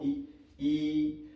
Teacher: जीभ जो है ई कहने पर तालु के पास जाके सट रही है। ई, तो ये क्या हो गई, ये तालु हो गई।